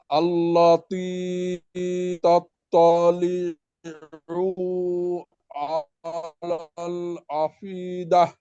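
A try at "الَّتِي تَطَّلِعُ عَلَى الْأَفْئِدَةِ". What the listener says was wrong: তাত্তালিউ, পুতে একটু টান হয়ে গেছিল। আলাল আফ ইদা। আলাল আফ ইদা, বাতাস ভাতে বাতাস বের, আফ ইদা।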